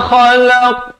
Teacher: Kha ni di hujung kerongkong. Qaf ni makhrajnya di pangkal lidah.